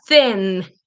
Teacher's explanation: tongue between your teeth no vibration